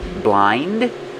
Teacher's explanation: You don't really hear the D, blind.